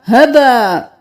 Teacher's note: ہبا 5 الف کے برابر کھینچنا ہے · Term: مد